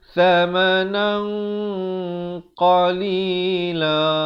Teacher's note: Ikhfa hakiki di sini dibaca tebal kerana qaf merupakan huruf isti'la.